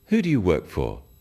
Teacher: when you ask people questions about themselves in English use a falling tone it sounds friendlier